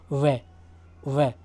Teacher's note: दंतमूल है ना, मतलब दंत और मशूड़ा मिलकर के टच होता है जब बोला जाता है ले, तो इसको वत्सर्ग वर्ण बोलेंगे दोस्तों। ठीक है, वे का दंतोष्ठ ऊपर के दांत प्लस निचला होठ, ये दोनों से बोला जाता है